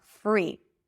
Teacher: And then the word free is pronounced with an F sound. So you got to bring the bottom lip to the upper teeth and then bring it bring the tongue in for the R.